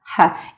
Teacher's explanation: Our H, Russian H, is stronger than English H.